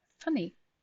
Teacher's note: the lower lip touches the upper teeth and you push the air through without making a sound